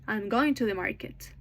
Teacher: Notice that going and market are stressed while I'm to.